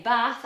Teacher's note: Now the long vowel a which in standard British English is long and open but in northern English where I originate from it's the short ah most of the time. In America it's the same as northern English.